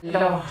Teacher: Another SSB feature that I talk about a lot, but which seems to me to get under-mentioned, is the affrication of T. · that's pronouncing T as a fricative, like an S, but usually with less sibilance.